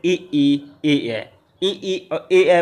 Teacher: बोलने में जीभ का आगे वाला भाग काम करता है, अग्र भाग सक्रिय होता है, इनको हम लोग अग्र स्वर कहते हैं।